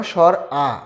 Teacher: বিবৃত বর্ণ স্বর আ, বিবৃত বলেছিলাম 50টা বর্ণের মধ্যে স্বর আ বর্ণটা সবচেয়ে বেশি মুখ খুলতে হয়, এজন্য এটা হচ্ছে বিবৃত স্বর আ।